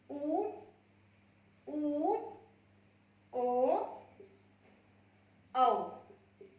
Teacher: ये चार स्वर हैं जो वृत्तमुखी होते हैं।